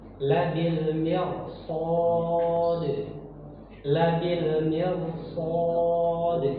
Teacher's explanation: Jadi rohnya dibaca tafkhim, tebal.